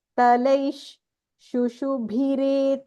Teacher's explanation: It is talaish because there is a visarga here.